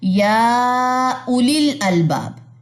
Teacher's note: یہ واو یہاں پہ سائلنٹ ہے, ٹھیک ہے, یا اولیل پڑھا جائے گا. یہ واو یہاں پہ سائلنٹ ہے, یہ نہیں پڑھی جائے گی, یہاں پہ واو مدہ نہیں ہوگا